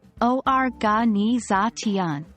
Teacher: The primary stress is on the fourth syllable, but there is a secondary stress on the first syllable. Organization.